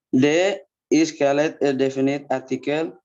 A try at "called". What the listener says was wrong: Bukan called, called. itu kolak pisang. Kolak pisang saya paling suka kolak pisang. Ini dibaca called ya, bukan kolak.